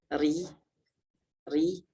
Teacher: Ro apabila kita baca tipis ri, maka secara tidak langsung itu makhrajnya akan membelok ke mendekati makhrajnya lam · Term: inhiraf